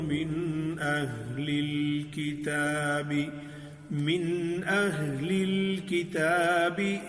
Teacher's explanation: من اہل میں یہ نون ساکن کے بعد حمزہ آیا ہے، تو یہ اظہار ہے